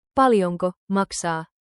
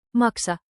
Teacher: Without the long a. Means liver, don't mix them up.